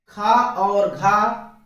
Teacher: जिनमें उच्चारण के समय वायु की मात्रा ज्यादा मुख से बाहर निकलती है, उन्हें महाप्राण कहते हैं।